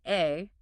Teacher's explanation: The hey is an open breath vowel sounding like a.